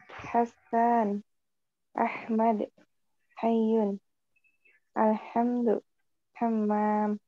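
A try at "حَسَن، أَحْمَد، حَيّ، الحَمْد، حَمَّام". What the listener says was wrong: Ahsanti barakallahu fik.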